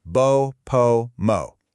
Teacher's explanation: See how your lips come together for all of them?